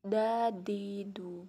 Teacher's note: menyentuhkan lidah ke bagian gusi atas dalam huruf da ketika mati juga harus terdengar mantul